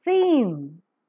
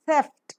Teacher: is coming out from the lungs passes out with audible friction the vocal cords are drawn wide apart during the articulation of the sound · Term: voiceless Dental fricative